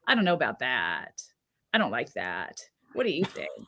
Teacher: at the end of a utterance or end of a sentence lowering your voice pitch so that your vocal folds basically kind of pop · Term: vocal fry